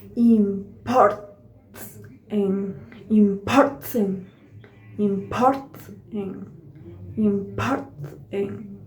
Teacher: the vocal cords are closed in the T, and then the N is pronounced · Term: Glottal